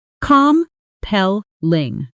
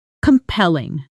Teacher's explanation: Stress on the second syllable.